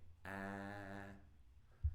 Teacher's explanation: If you touch your throat and say ah, you'll notice that there's this distinct vibration. That's your vocal cords. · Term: voiced